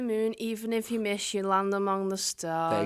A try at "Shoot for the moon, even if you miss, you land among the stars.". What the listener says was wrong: You said it with a bit of a monotone voice, so it didn't quite... Say it all bouncy and nicely.